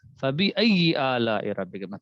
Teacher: حروف لین دو ہیں, واو اور یا, جبکہ یا ساکن ہو اور ان سے پہلے زبر ہو. حروف لین کو نرم آواز کے ساتھ جلدی پڑھیں گے, معروف پڑھیں گے, کیونکہ مجھول نہیں پڑھنا.